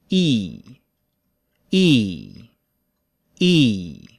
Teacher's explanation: i.e like in nice nice or why like in happy happy the e sound is high and in the front but it's not as high as japanese e it starts lower than japanese e and ends high · The E sound is high and in the front, but it's not as high as Japanese E. It starts lower than Japanese E and ends high. E, E, E. Because it is a tense vowel, it is a little longer, and for most English speakers, the tongue rises while we say it.